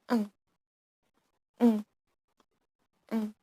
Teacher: And then ing sound, ing, ing, ing. Ing sound is nasal voice on velar dorsal place.